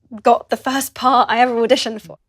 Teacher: you'll notice a glottal stop between the words 'got' and 'the'